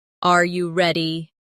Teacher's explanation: The pitch of their voice goes up at the end.